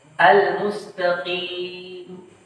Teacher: tidak menampakkan huruf mim pada kata al-mustaqim ketika berhenti waqaf. Al-mustaqim, hilang mimnya.